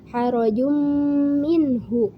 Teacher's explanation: Huruf idgham ma'al gunnah ada 4 yaitu ya, nun, mim, wawu yang sering disingkat menjadi yanmu. Membacanya harus diidghamkan atau dimasukkan kepada huruf setelahnya, yaitu huruf mim, dan memakai gunnah. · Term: idgham bi gunnah